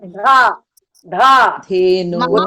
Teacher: పెట్టేయండి ను కి దీర్ఘం పెట్టేయండి ధేను అక్కడ ధ కూడా ఇది రావాలి దే కాదు త ధ ద ధ ధ ధేను మహాప్రణం రావాలి